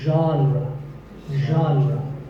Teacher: Pay attention to the first sound. It's like sh, but you have to put your voice into it.